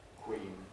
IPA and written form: kwiːn (queen)